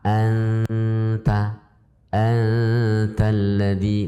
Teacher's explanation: Dikatakan izhar karena sifatnya nun masih ada kunta atau anta ya. Kemudian disertai dengung dan makhrajnya nun itu sudah masuk ke dalam makhrajnya ta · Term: ikhfa